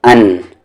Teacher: یعنی دو زبر کا ساؤنڈ اوپر جاتا ہے ناک میں